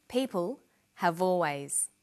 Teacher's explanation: People have always. Notice how in conversation we link the final consonant sound v with the initial vowel sound